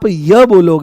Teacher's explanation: जैसे ही आप य बोलोगे तो आपको इ सुनाई देगी। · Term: इ की ध्वनि